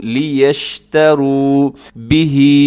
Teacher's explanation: دیکھیں الفاظ کا حسن بڑھ جاتا ہے، اگر آپ یوں کہیں لے یشتروا تو اچھا نہیں لگے گا، بلکہ لام زیر لی ہے، لیشتروا، لیشتروا بہ، کھڑی زیر ہے تو ہا کو لمبا کیجیے گا۔ ثمنا قلیلا، ثمنا میں تنوین ہے اور یعنی آخر میں دو زبر کی تنوین ہے، اس کے بعد قلیلا کے شروع میں قاف ہے جو کہ حروف اخفا میں شامل ہے، اب یہاں پر اخفا کیجیے گا۔